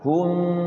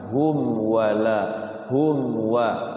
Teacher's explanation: Izhar syafawi. Jadi mimnya dibaca jelas, tidak boleh didengungkan. Hum. Enggak boleh tapi langsung hum wala hum wa izhar syafawi.